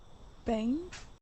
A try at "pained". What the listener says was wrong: give me a D sound there